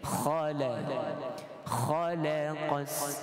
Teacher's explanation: Jangan ditebalkan. Lam sifatnya nipis, kecuali pada lafzul jalalah Allah.